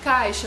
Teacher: a penúltima sílaba, que é o cai, ela é a mais forte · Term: paroxítona